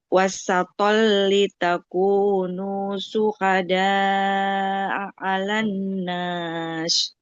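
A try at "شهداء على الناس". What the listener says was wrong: Syuhada'a, jangan kecampur hurufnya. Syuhada'a 'alan nasi wa yakunar rasul. Syuhada'a 'ala. Yang pertama itu hamzah. Syuhada'a, baru 'ala.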